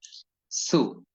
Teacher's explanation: হয় সু বাংলার মত করে সাধারণভাবে মোটামুটি একেবারে বাংলার মতো না সিন অক্ষরের উচ্চারণ হয় পাতলা করে দুই ঠোঁটকে কিছুটা দুদিকে সম্প্রসারিত করে দিয়ে মুখে হাসি হাসি ভাব রেখে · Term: সিন পেশের উচ্চারণ